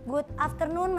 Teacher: Coba kamu perhatiin gimana cara dia bilang afternoon. Itu R-nya tuh diputer banget, jadi kedengeran banget itu logat Indonesia.